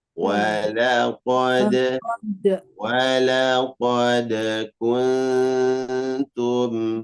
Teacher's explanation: Jangan lupa qalqalah, mantul di huruf dal.